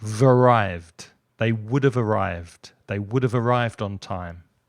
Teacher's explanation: you've got the consonant sound at the end of have, and you've got the vowel sound at the beginning of arrived. It's it's a schwa sound. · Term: those two join